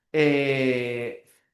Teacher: también hay una sola labio dental, ¿no? La única es la F.